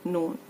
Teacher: नून जबान का किनारा ऊपर के दांतों को लगाना है, एक नोकीले दांत से लेके दूसरे नोकीले दांतों के जड़ से